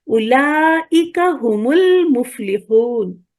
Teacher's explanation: دونوں سکون سکون ہو گئے نا، تو اب پڑھے نہیں جا سکتے، تو اب یہ ہو جاتا ہے ہم المفلحون